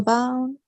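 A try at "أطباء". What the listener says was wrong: Atibba. Yeah, with the shadda.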